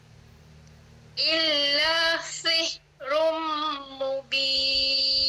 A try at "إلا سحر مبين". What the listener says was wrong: Baiklah, la tu panjang sikit lah, 2 harakat. Illa sihrum mubin.